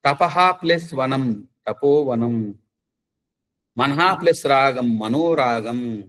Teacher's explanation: అకారం పక్కన విసర్గ వచ్చినప్పుడు ఓ అని మార్పు చెందుతుంది